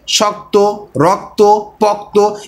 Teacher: এখানে মাঝখান থেকে যে অ ধ্বনি ছিল সেটিকে বাতিল করা হয়েছে। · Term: যুক্তাক্ষর